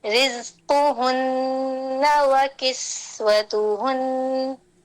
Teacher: जा में आगे के दांत बंद होंगे, जहरिया आवाज ऊंची होगी सफीर की, सीन में हल्की सीटी होगी जा के मुकाबले में।